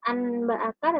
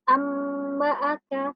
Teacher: dibaca menjadi huruf mim disertai dengan gunnah. Jadi bacanya bukan anba'aka tetapi amba'aka, seperti itu. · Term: iqlab